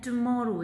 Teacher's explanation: जो म है इस साउंड पे हम स्ट्रेस देते हैं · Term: वर्ड एक्सेंट